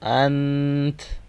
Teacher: حمزہ نون فتحہ ان، اور تا کا ہم ساؤنڈ کریں گے کیونکہ لاسٹ لیٹر کے پاس فتحہ ہے، اور جب فتحہ کا ہم اسٹاپ ساؤنڈ کرتے ہیں تو اس کو ہم چینج کر لیتے ہیں سکون میں، ٹھیک ہے۔ لاسٹ لیٹر کے پاس جب فتحہ آتا ہے تو وہ ہم ریڈ نہیں کرتے، تو وہ آٹومیٹکلی جزم میں کنورٹ ہو جاتا ہے